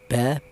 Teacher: Huruf ba ini bertempat di kedua bibir ya